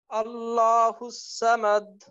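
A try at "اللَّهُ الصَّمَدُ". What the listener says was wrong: হুম, সা যেন না হয় স, আল্লাহু সামাদ।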